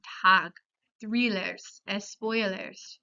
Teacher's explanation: La e sigue siendo una vocal anterior, media y no redondeada. O sea, los labios no forman un círculo y casi son paralelos más o menos cuando se realiza el sonido vocálico con la lengua un poco elevada en el medio de la cavidad bucal.